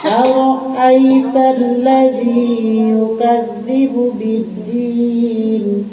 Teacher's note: Ra-nya tafkhim, artinya tafkhim itu dibacanya tebal. Jangan aro'ait, aro, berarti yang kedua, aro, bukan aro, harus tafkhim, tebal.